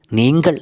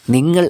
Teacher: ഈ തമിഴിൽ നീങ്കൾ എന്നാണ് പറയുക അപ്പോൾ ഇവിടെയാണ് തമിഴും മലയാളവും തമ്മിലുള്ള വ്യത്യാസം തമിഴിൽ ആ ഗരത്തെ കൂടി ചേർത്തിട്ട് അതായത് കയെ കൂടി ചേർത്തിട്ട് നീങ്കൾ എന്ന് വിളിക്കുന്നു എന്നാൽ മലയാളത്തിൽ അനുനാസിക നായ്ക്ക് പ്രാധാന്യം കൊടുത്ത് നിങ്ങൾ എന്നാണ് പറയുന്നത്